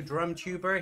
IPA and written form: drʌmːtjuːbə (DrumTuber)